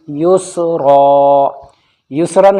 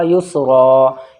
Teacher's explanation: دو زبر پر جب ہمیں وقف کرنا ہو یعنی رکنا ہو تو ایک زبر کے ساتھ میں پڑھا جاتا ہے اور وہ الف مدہ ہو جاتا ہے یعنی کھینچ جاتا ہے